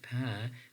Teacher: we are making a bilabial sound a sound which is produced by Two Lips in terms of place of articulation right and moreover if when